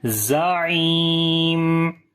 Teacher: Ain we read from the middle of the throat and we long due to ya madda here.